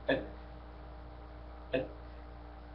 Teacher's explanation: اتي ب صفه الشده ثم صفه الهمس